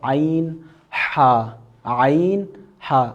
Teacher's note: عین ہا، جو کہ حلق کے درمیان والے حصے سے ادا ہوتا ہے